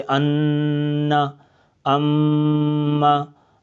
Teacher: तो इनके ऊपर गुन्ना एक अलिफ के बराबर किया जाता है एक अलिफ के बराबर खेंच के गुना करते हैं